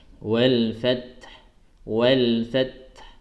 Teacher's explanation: Makanya oleh karena itu kenapa saya ketika menjelaskan surah An-Nasr itu di sini agak saya lamakan, ya, karena pertama tempo saya juga lambat, dan itu untuk menjelaskan kepada teman-teman di Facebook itu disempurnakan terlebih dahulu huruf ta-nya, baru dilepaskan sisa huruf ha